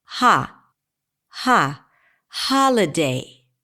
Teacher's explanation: in the word holiday, the primary stress falls on the first syllable.